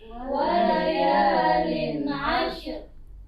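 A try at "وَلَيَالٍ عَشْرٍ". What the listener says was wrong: Jadi bukan ashr ya, tapi ash matikan, diikutikan bunyi ra. Ashr.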